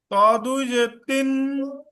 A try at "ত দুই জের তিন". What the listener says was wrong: হ্যাঁ, আরেকটু মোটা করতে পারলে ভালো।